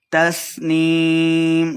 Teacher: تسنیم سین کے سیٹی کی آواز آئے گی اور یائے مدہ ہے دو حرکات لمبا کر کے پڑھیں گے.